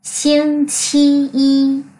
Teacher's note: Y này là thanh ngang, thanh 1 đấy. Ngân nó ra.